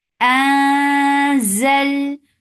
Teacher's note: This ikhfa is light, so keep your tongue straight to make this ikhfa.